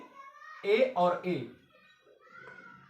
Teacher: कंठ और तालु, दोनों को मिला करके ए और ए बोला जाता है, जिसको हम कंठ ताल्व कहते हैं।